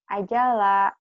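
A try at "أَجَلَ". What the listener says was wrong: Pendek.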